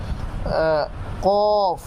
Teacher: জিহ্বার গোড়া তার বরাবর উপরের তালুর সঙ্গে মিশাইয়ে · জিহ্বার গোড়া তার বরাবর উপরের তালুর সঙ্গে লাগাইয়া 2 নক্তাওয়ালা কফ। তো জিহ্বার গোড়া বলা হয় একেবারে জিহ্বার যে ভিতরের অংশ রয়েছে সেটাকে বলা হয় মূলত জিহ্বার গোড়া, অর্থাৎ যেখানে আঙুল রাখলে জিহ্বার একেবারে ভিতরের যেই অংশে আঙুল রাখলে একটু বমি বমি ভাব হয়, সেটাকে বলা হয় জিহ্বার গোড়া।